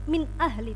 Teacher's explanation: nun sukun bertemu dengan alif, maka disebut dengan bacaan idhar, harus jelas min ahli